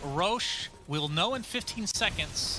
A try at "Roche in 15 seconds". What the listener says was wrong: You're doing a southern twang. southern twang, yeah. You said Roche and 15. Roche.